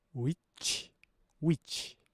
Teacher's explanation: 이 추위는 무성음으로 소리를 냅니다. 그러니까 성대 진동이 느껴지지 않게 소리를 내면 돼요.